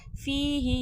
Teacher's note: या मद्दा या साकिन से पहले ज़ेर खींच के पढ़ा जाएगा